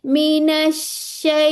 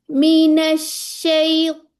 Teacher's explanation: इसके अंदर हमारी जबान की जो जड़ है वो उठ जाती है